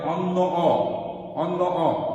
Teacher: তারপরে অন্য অ, অন্য অ, অ হচ্ছে এখানে অ ঠিক অর মতোই হচ্ছে, অ ওর মতো হয়ে যাচ্ছে না, তাই এটাকে আমরা বলি যে অ এর স্বাভাবিক উচ্চারণ।